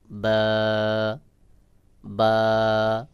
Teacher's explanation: বা উচ্চারণের ক্ষেত্রে দুই ঠোঁটের ভেজা অংশ থেকে স্বাভাবিকভাবে উচ্চারণ হবে